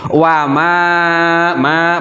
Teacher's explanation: panjang itu namanya mad tabi'i, harus dibaca panjang 2 harokat